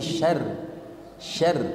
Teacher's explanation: rnya tipis bukan tebal